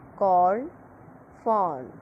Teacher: long mid back rounded vowel, also shown by the symbol like this O.